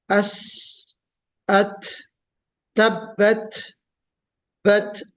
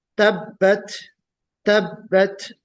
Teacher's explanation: हल्की सी जो सांस है वो आपकी जारी रहती है उसको अदा करने में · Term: हम्स